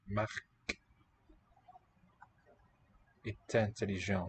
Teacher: Here we're linking Marc est intelligent. because they're in a phrase. They're in the predicate together.